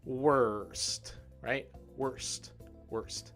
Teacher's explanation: not only does it have a group of consonants it also has that low er sound